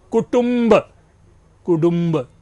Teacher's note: ट ड में बदल रहा है